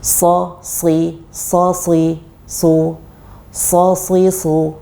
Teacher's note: harus ada tebal-tebalnya seperti itu, bunyi yang berat seperti itu adalah akibat dari lidah belakang yang naik. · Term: itbaq